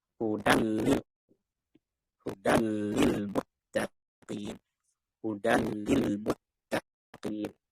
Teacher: Terus dibaca idgham tapi tanpa gunnah. Ini untuk yang bila gunnah dulu.